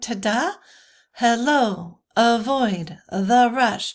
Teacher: It's a metrical foot of 2 syllables where the accent lies on the second syllable. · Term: I am